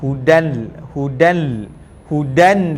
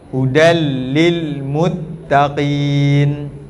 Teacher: Jangan bunyikan hudan nun dengan lam. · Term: idgham